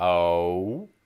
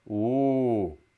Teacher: Essentially, they do it in one syllable, sort of a monophthong. When we non-Northern Midwesterners try to say the sound O, it's sort of O, whereas they do it as a ooh.